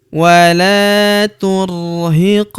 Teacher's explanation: Huruf qof berharakat sukun kita pantulkan atau kita qalqalahkan.